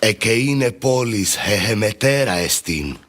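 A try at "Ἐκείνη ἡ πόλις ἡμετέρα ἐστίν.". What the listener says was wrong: Same problem with epsilon iota and phonemic vowel length. Ekene he polis he metera estin. Ekene he polis he metera estin. Something more like that would be what I would want.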